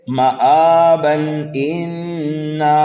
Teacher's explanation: تنوین کے بعد حمزہ آنے کی وجہ سے جو ہے یہاں پر اظہار حلقی ہو رہا ہے